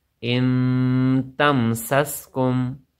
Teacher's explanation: ام تم سس، کاف میم پیش کم، ام تم سس کم. میم ساکن کے بعد پھر میم اور با کے علاوہ کو اور حرف آیا ہوا ہے تو یہاں پر بھی اظہار کا قاعدہ لگے گا، یعنی ہم غنہ نہیں کریں گے.